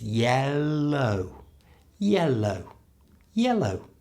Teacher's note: it's the tongue up sound first because we've got the E vowel sound before the L, so it's the up L, L, and then the tongue has to keep going up to stroke the back of the top teeth for the down L sound.